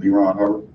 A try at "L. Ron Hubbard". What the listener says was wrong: L. Ron Hubbard, not Lee Ron, L. Ron.